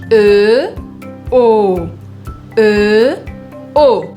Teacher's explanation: Então a boca arredonda e a língua baixa. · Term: som O